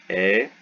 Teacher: it's like a longer epsilon so it's really just two epsilons put together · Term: eta